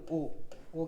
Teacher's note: कंठ प्लस ओष्ठ से मिलके बने होते हैं